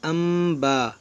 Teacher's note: کیونکہ یہاں نون ساکن کے بعد با ہے. یہاں پر ہوگا اقلاب، اس کو پڑھیں گے امبا، اس کو انبا نہیں پڑھیں گے